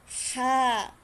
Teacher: pero yung tunog niya hindi galing sa diaphragm, hindi galing sa dibdib, o hindi galing sa tiyan, kundi ito ay nanggagaling sa lalamunan.